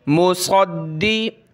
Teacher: دال کو سخت کریں گے، صاد کو موٹا کرنا ہے